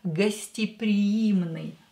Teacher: «е» is not stressed, so we are going to pronounce it as «и».